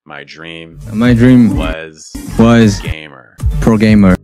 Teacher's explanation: he's actually able to use a lower placement more consistently you're going to hear more vibration in his throat